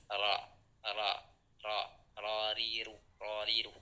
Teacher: Ro adalah ketika suara kita mengalir dari tengah-tengah ujung lidah. · Takrir adalah lidah bergetar. Nah, ketika kita menyebutkan dari huruf ro, maka lidah kita itu wajib bergetar